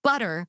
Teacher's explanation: That first syllable is stronger than the second syllable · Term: strong syllable